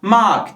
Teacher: ma diyorum yani buradaki sesli harfimi uzatacağım